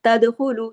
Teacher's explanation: دال پہ کلکلا، دال پہ دیکھیے جزم ہے، کلکلا ہوگا